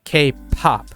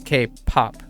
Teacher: guessing that's why they're they pick P's as well because there's High aspiration a lot of air is coming out